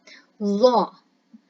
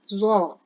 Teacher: Jadi lidah berada di antara gigi atas dan gigi bawah.